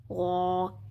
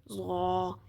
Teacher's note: اب یہ جو غا ہے یہ موٹا حرف بھی ہے اور نرمی والا حرف بھی ہے۔